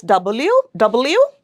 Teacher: it's bilabial as you can see both our lips are coming together double B both the lips are coming together W.